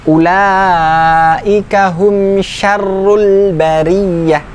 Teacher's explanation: Mim sukun ketemu dengan mim, selain mim dan ba adalah hukum bacaan izhar safawi. Izhar sekali lagi tidak berhenti, menyempurnakan bunyi mim sukunnya